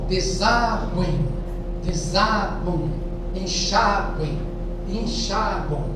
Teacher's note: É que na fala, esse M final, ele tem o som de U.